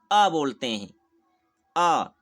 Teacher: इस अ का उच्चारण जीभ के मध्य भाग से होता है, यानी जीभ के बीच के भाग से इस वर्ण का उच्चारण होता है, इसलिए इसको हम मध्य स्वर कहते हैं।